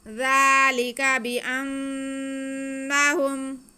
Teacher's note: ذال کو نرمی سے پڑھتے ہوئے اوپر کھڑی زبر ہے، ہم کھینچ لیں گے ایک الف کے برابر۔ اس کے بعد لام کے نیچے اور کاف پر زبر ہے، لام کے نیچے زیر ہے، تو ان کو بالکل بھی نہیں کھینچنا۔